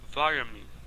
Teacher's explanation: Veja que o vitamin, o tan, foi reduzido a schwa.